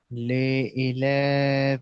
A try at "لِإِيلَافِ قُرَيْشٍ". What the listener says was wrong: লি টান হবে, লা টান হবে। لإيلاف قريش. লি ই লি ই নিচে দিকে নামান। লি ই